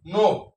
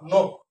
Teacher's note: অর্থাৎ যদি প্রথম অ থাকে প্রথম বর্ণের সাথে, তারপরে বর্ণে যদি হিয় খ থাকে, তাহলে অটা ও হয়ে যাবে। অর্থাৎ অ ছিল বিবৃত হয়ে যাবে সংবৃত। সংবৃত মানে সংক্ষেপ উচ্চারণ।